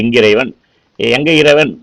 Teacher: ஒற்றெழுத்து தனக்குரிய மாத்திரையிலிருந்து அது நீண்டு ஒலிக்குது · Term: ஒற்றலபடை